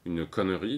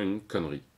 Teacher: Avec la synérèse, c'est l'opposé. On réunit 2 syllabes habituellement distinctes en une seule.